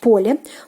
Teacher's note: The stress falls on the first syllable.